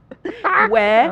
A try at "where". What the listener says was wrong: I feel like you're still hitting that R, man.